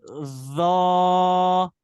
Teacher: देखिए जौ की आवाज नहीं आए, जेड वाला साउंड ना आए, ठीक है ना, फ्रिक्शन साउंड हमें इसमें नहीं चाहिए।